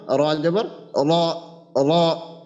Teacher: আগার পিঠ তার বরাবর উপরের তালুর সঙ্গে লাগাবো। এরপরে জিহ্বার গোড়াটা যদি একটু উপরের দিকে উঠিয়ে রাখি, উঠিয়ে দিই র উচ্চারণের সময়, তাহলে ইনশাআল্লাহ আর কি আমাদের র এর উচ্চারণটা মোটা হয়ে যাবে।